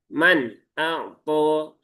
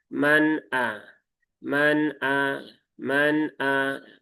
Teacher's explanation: Alirkan sedikit ya. Tawasud itu mengalir sedikit ya. karena dia di antara mengalir dan tertahan.